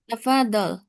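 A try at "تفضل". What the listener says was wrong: pengucapan tafadol kurang ditekan ya. Tafadol. Tafadolad tafadol ya. Itu zatnya kan tasdid.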